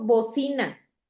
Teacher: tiene la sílaba tónica en la penúltima sílaba, por eso es grave.